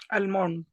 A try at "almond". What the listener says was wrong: It is almond. It is L is silent in this word. We say almonds. It is almond. It is almond, not almond. It is almond.